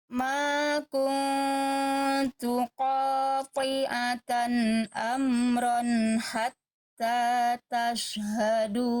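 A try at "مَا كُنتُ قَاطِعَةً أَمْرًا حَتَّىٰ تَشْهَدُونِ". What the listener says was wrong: Bagus, jaga tenangnya.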